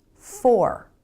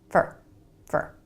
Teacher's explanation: take for example this word for fully pronounced it's for but most of the time in a sentence americans pronounce it fer really fast with the reduced vowel · But most of the time in a sentence, Americans pronounce it fur. Really fast with a reduced vowel, fur, fur. So if you're expecting to hear for, fully pronounced and clear, then you're never going to hear fur.